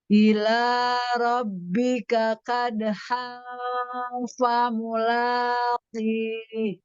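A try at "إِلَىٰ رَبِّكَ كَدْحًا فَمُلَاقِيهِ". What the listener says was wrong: Kalau kolahnya masih melemah ya, dikuatkan. Bukan kadhang, kadhang fa, kadhang fa mulaqi. Ila rabbika.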